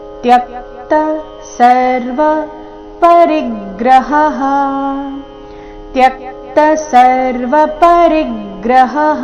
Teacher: ರಿ ಮೇಲೆ ಆಘಾತ ಗಮನಿಸಿ. ಪರಿಗ್ರಹಃ, ಹ ನಂತರ ಬಂದಿರೋ ವಿಸರ್ಗದ ಉಚ್ಚಾರಣೆ ಹ ಅಥವಾ ಹ ಎರಡೂ ಸರಿಯಾಗಿದೆ.